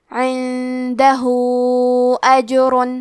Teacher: آخر میں ہاں پہ الٹا پیش ہے اور اس پہ مد کا علامہ ہے. یہ مد صلہ کبریٰ ہے تو ہم اپنی آواز 2 سے 4 مد کے برابر لمبی کریں گے